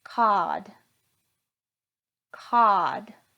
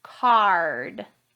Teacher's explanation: if your tongue is not high back and tight when you say r it's going to sound like cod cod versus card do you hear the difference in mine you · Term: r sound